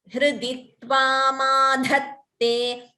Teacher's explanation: Ta is Alpa Prana, only dha is Mahaprana.